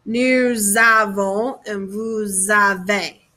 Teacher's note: zavo and so whenever we have an s with an a it's going to make this link called a liaison and it's going to make this z sound